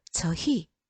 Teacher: 자, 그 다음에 2번을 보세요. 2번은 의라는 이중모음이 자음 히읗을 가지고 있네요. 그러면 무조건 이로 발음하죠.